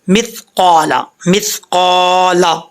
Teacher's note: یعمل مثقال، قاف موٹا، مث، سا میں سیٹی نہیں آنی چاہیے، سین میں سیٹی ہوتی ہے، سا میں نہیں ہوتی